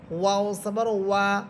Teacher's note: ওয়াও ঠোঁট গোল করে পড়বেন